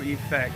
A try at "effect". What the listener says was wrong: You gotta pronounce the E.